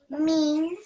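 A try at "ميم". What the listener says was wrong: So this is meme. Yeah, so it's two M's. Meme. Remember the two M's. Meme.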